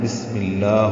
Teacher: میم کے نیچے زیر ہے، یہ با کی وجہ سے یہ بی اور اسمی ہے، اس لیے زیر آئی ہے با کی وجہ سے بسمی، یعنی اس زیر کو لام اسم جلالہ سے ملانا ہے تو بسم اللہ ہوگا۔ لام اسم جلالہ کو 2 حرکات لمبا کرنا ہے اور باریک پڑھنا ہے۔ الف لام نہیں پڑھیں گے کیونکہ یہ ادغام شمسی ہو رہا ہے، تو بسم اللہ ہی جو ہے زیر ہے، اصل میں یہ اسم اللہ ہی ہے، مرکب اضافی اور مضاف الیہ حالت جر میں ہوتا ہے، یعنی زیر کی حالت میں۔